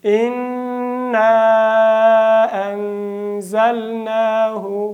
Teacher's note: ها به کوشش کوو رانه چې اشباع ونه شي. اکثر د عامو خلکو نه په ها کې ډېر زیات اشباع کیږي.